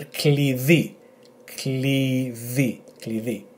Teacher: It should be that it's a the pronunciation, not the, and E with the emphasis on the second syllable